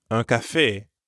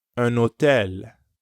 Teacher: Hôtel starts with an H, but in French, the H is always silent, so you'll have to use the liaison.